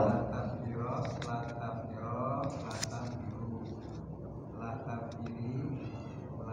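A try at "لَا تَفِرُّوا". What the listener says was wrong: di tasdidnya diperjelas. La tafirro, la tafirro, la tafirru. Tasdidnya diperjelas.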